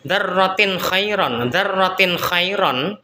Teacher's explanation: kata darrotin khairon dibaca idhar halqi dibaca jelas dikarenakan ada tanwin bertemu dengan huruf k yang mana huruf K adalah merupakan salah satu huruf halq yang